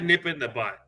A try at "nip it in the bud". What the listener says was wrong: nip it in the bud, right? Not butt. I heard butt.